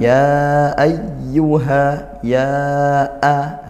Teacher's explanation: Tapi karena panjangnya sama yang kita baca sebagaimana mad wajib. Artinya panjangnya sama bertemu hamzah itu dua alif atau empat harakat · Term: mad jaiz munfasil